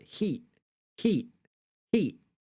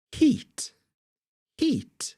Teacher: I kind of don't pronounce the T at the end of this word heat it's like little glottalized stop